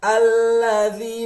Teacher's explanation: Karena di sini lamnya itu tidak dibaca dengan panjang, pendek. Yang panjangnya itu ada di huruf za.